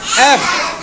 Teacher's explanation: এফ উচ্চারণটা এফ, দুই ঠোঁট এখন আর লাগবে না